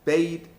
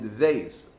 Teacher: The idea of the double letters is that these letters have 2 sounds, basically a plosive and a fricative, looking at it from the standpoint of linguistics.